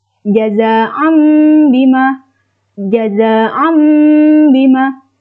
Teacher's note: membacanya mengganti huruf tanwin atau nun sukun menjadi mim. Yang terakhir, ikhfa.